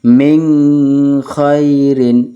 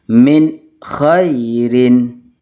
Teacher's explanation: adalah ada nun sukun bertemu dengan koho min khairin min Khair Jadi kalau dibaca dengung min khairin itu salah yang benar harus dibaca jelas